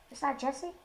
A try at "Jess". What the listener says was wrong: There is an E there, but it is just Jess. As any sane person would pronounce it Jesse. Because there is an E there.